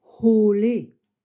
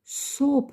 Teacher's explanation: He, ça vient depuis le fond de la gorge. C'est comme la lettre H en anglais, home. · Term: le son He